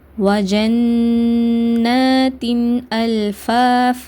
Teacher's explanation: நூனுக்கு மேலயோ இல்ல மீக்கு மேலயோ சத்தா வந்ததுனா நம்ம இரண்டு அளவு குண்ணா செஞ்சு ஓதணும் அதனால குண்ணா செஞ்சு ஓதுறீங்க இங்க அதன் பிறகு இந்த ஷத்தாக்கு மேல என்ன அடையாளம் இருக்குன்னா அலிப் சகீரா அதாவது கடாபருடைய அடையாளம் இருக்குது அதனால இரண்டு ஹரக்கத் நம்ம நீட்டி ஓதணும்.